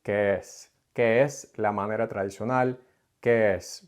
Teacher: It'll just be que, And then since the next word begins also with an E sound, they'll combine those two words into one longer run-on word